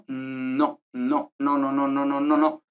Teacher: la lengua es pues básicamente en los alveolos es decir en la parte desde más delante de la boca